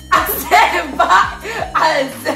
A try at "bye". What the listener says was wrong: But you don't tell the people bye with enthusiasm. You say bye. Bye. Say bye. And you look like you got F tone when you say it. Bye.